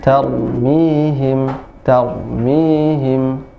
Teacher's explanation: kalau huruf ra itu jangan tarmihim, tapi cukup 2 getaran aja